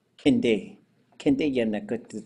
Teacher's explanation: I'm usually not going to hear the D on there. Kinde. Kinde yenna kut, it's going up. · When I talk about going upwards, I'm usually going to hear Kinde and Yinde. I'm usually not going to hear the D on there.